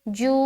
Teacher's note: واو مدہ کو ایک الف کے برابر کھینچ کر پڑھیں گے